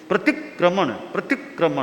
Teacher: संयुक्त है तो थोड़ा पहले पर जोर पड़े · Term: संयुक्त अक्षर